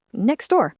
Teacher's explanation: >> Like in the phrase next door, it takes effort to pronounce that T sound in next. So in fast speech, we just say next door. The T vanishes